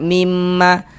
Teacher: Jangan dibaca minma tapi dimasuk bunyi nun sukun melebur masuk ke huruf mim.